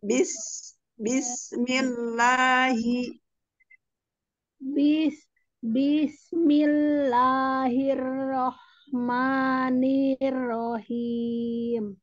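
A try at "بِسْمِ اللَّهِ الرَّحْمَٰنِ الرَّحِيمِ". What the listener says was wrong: Bisnya jangan bis, jangan terseret. Bis langsung saja. Bis. Bis bis itulah. Coba ro-nya hirroh ditebalkan. Hirrohman.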